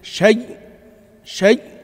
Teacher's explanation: الإدغام يعني نحول الهمزة إلى ياء وندغمها في الياء